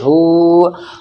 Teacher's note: हा के ऊपर उल्टा पेश है और उल्टा पेश वाव मद्दा की बराबर खिंचता है। वाव मद्दा बोलते हैं खींचने को, यानी वाव को खींचने को।